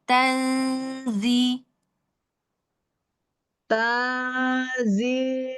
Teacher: Nun sukun bertemu zai tanzi langsung masuk makhraj zainya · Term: ikhfanya